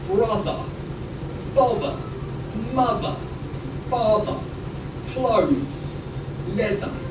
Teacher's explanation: The voiced, which sounds like a... They have a vibration in the throat. For example, in words like brother, bother, mother, father, clothes, leather.